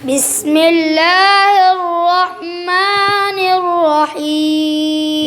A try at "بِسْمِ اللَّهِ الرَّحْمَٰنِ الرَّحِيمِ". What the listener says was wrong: जाल पर सीटी क्यों निकाल रहे हो? ज़बान ऊपर लगाओ।